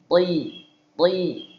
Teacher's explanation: Huruf ta itu akan selalu tebal, ada yang namanya itbaq, lebih tebal tuh kan. Ketika dia berharakat fathah, maka tebal.